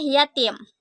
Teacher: Bunyi Y dengan ciri-ciri mati, oral, laminopalatal dengan contoh kata yatim.